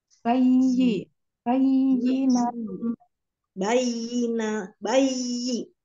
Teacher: Jadi ya-nya ditekan agak tinggi sedikit daripada huruf ba dan nun.